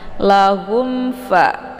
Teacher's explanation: mim sukun bertemu dengan Fa ini dinamakan kepada izhar syafawi jadi cara bacanya mimnya dibunyikan secara jelas atau jelas bunyi m-nya Jadi cukup ditekan saja tidak perlu ditahan